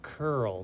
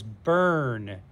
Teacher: notice that the ur just says er you don't say uh for the u you don't say u for the u that r controls the u and just makes it sound like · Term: bossy r